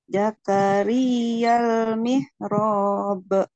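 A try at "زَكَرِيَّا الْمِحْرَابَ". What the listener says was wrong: Kurang panjang ro-nya. Panjangnya berapa? Oh, panjangnya berapa mihrab? Ya, 4, betul.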